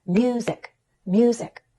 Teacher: I'm going up in pitch on mu and then down in pitch on zik. In other words, I'm going up on a stressed syllable. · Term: falling intonation